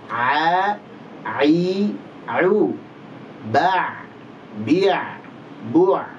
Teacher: ain tidak memiliki sifat gunnah, tidak ada dengungnya.